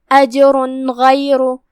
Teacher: ہم جیم کو ہلاتے ہوئے یہ کلمہ پڑھیں گے کیونکہ یہاں حکم القلقلہ ہوا · اس کے بعد کلمت غیر میں یہاں حرف الغین ہے، غین حروف الاظہار میں سے ہے لہذا جو کہ تنوین کی اصلیت نون ہوتی ہے تو ہم نون کو ظاہر کرتے ہوئے بغیر غنہ کی حکم کو ادا کریں گے